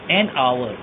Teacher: एन आवर में एच की sound नहीं आ रही, ओ की साउंड आ रही है, इसलिए हम एन आवर बोलते हैं। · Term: साइलेंट एच